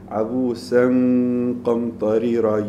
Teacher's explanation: You go from the nasal of the noon, the ghunna of the noon, towards the tafkheem of the qaf, because the qaf has a fatha. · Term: ikhfa